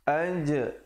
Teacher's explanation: ada qalqalah di situ, qalqalah sughra, pantulan, berikan lantunan di situ.